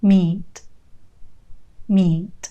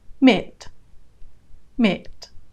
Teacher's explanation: you often say a different word when you mispronounce the vowel if you make the e sound in meat too short you're probably going to be saying this other word mitt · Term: long vowel sound